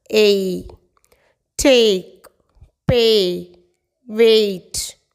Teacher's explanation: First one, A. This is the combination of 2 sounds. A sound plus E sound.